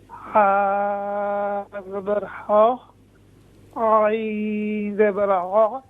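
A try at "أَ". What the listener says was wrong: عین نہیں ہے، یہ حمزہ ہے، حمزہ زبر ا،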